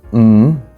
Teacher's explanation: lips close go through the nose nasal through the nose mmm we have mmm where you bring your tongue up to